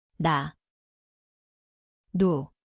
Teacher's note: It sounds like N. The place is the tongue tip, upper gum.